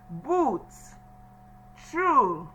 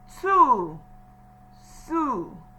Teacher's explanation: Ooh sound, as if the tongue is going back. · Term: long oo sound